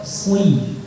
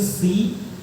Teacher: Shad dengan sin itu makhrajnya sama. Bedanya shad lidah belakangnya naik jadi tebal.